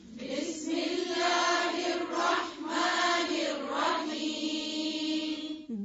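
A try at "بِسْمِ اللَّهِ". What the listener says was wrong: بی، یہ بے نہیں ہے، کیا ہے؟ بی. بسم اللہ. پھر سے پڑھیں.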